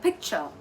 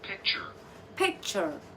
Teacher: So that's ch sound and then the symbol is the h sound and then there's an r. Now this is an American way. So they will roll the ar more.